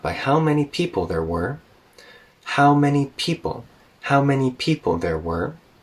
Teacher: so stay even on how many how many people there were and then we kind of dip down